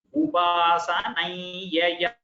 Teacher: Upasanam yaya, if you split and say, when the yakara follows the anuswara, you have to get a nasal sound there